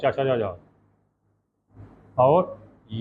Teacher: संपूर्ण चा समूह, चा, और जा और या का उच्चारण तालू से किया जाता है